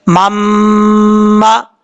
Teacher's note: हमजा या जबर आई, या अलिफ जबर या, अय्या, मीम दो जबर मम, मीम जबर मा, अय्या मम मा, मीम को जब मीम के साथ कनेक्ट करेंगे, यहाँ पे इदगाम यरमलून हो रहा है, तो एक अलिफ के बराबर इसको गुन्ना करेंगे, गुन्ने की मिकदार एक अलिफ के बराबर होगी, गुन्ना करके पढ़ेंगे, ठीक है।